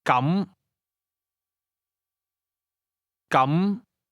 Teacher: Say in that case or then using a mid rising tone